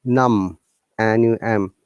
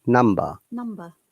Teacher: Numb, there is no b sound at all.